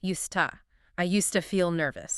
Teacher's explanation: The D and T blend together into one sound and the two reduces to our favorite sound, the schwah. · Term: connected speech